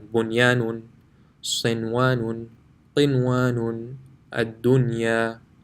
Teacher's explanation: after nun sakin, the ya is in the same word, so there will be no ghunna